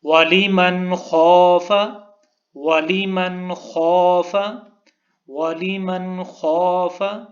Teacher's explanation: حروف حلقی، تو وہاں پر غنہ نہیں ہوگا بلکہ اظہار ہوگا۔ تو ہم نے پڑھا ہے وَلِمَنْ خَافَ، اس کو وَلِمَنْ غنہ نہیں کیا، اس طرح پڑھنا ٹھیک نہیں ہے۔